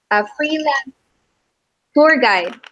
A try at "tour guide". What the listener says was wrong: Tour guide. Yeah, it sounded like you said a freelance poor guy. Oh, tour guide. Okay, it sounded like you said poor guy. I never heard of a freelance poor guy.